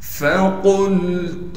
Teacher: فا کو بغیر کھینچے پڑھیں گے, قاف کو موٹا کر کے پڑھیں گے اور قاف کو آگے لام ساکن سے ملا دیں گے